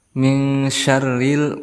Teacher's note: Sya itu termasuk huruf tafasyi yang artinya menyebar.